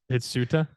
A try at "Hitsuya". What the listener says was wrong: That's not a T, that's a Y. It's Hitsuya. Hitsuya.